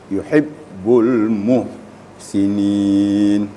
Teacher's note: jadi suara juga terputus harus syiddah